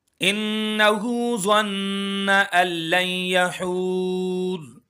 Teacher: انہو ظن ان لن یحور، ان یہاں پر بھی غنہ ہوگا، ہو کو ایک الف کے برابر کھینچیں گے، کیونکہ کھڑی حرکات ہے، کھڑی حرکات میں کوئی بھی حرکت آ جائے اس کو ایک الف کے برابر کھینچ کر پڑھتے ہیں۔